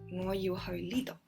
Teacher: Li in a high tone, do in a mid-low tone.